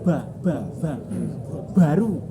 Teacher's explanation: Yang sering terjadi kesalahan ba itu ada anginnya.